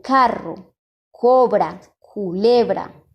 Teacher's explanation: El fonema es la K y el punto de articulación es velar, como lo podemos ver en la imagen.